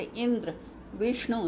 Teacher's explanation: जैसे इंद्र विष्णु शब्दों में संयुक्त अक्षर के पहले अक्षर पर बल दिया जा रहा है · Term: बलाघात